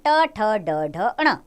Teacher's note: तालू के नीचे ट वर्ग ट वर्ग में आते हैं व्यंजन ट ठ ड ढ ण मूर्धन्य इनका उच्चारण स्थान है